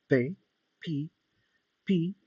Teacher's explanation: En estos grupos, perdón, en este grupo existen pares de sonidos sordos y sonoros, como por ejemplo tenemos la letra P, P, P, P, que si se fijan no existe una vibración en sí, es nada más la vibración, es nada más liberar el sonido directamente hacia afuera, no hay vibración en las cuerdas vocales.